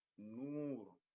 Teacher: So we kind of stretch the pronunciation like as if we are having two O's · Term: long vowel